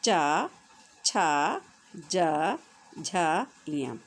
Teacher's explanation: आपकी जो जीभ है वो ऊपर तालु पे टच करती है, तो उसका मतलब इन वर्णों का जो उच्चारण है वो तालु की सहायता से कर रही है, ठीक है।